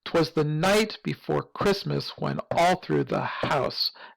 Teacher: Nicholas soon would be there." And here we have like a triplet feel that develops where we have kind of two unstressed syllables that's followed by a more strongly stressed syllable